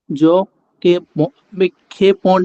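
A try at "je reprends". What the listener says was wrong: এটা হচ্ছে কে না, এটা খে। খে,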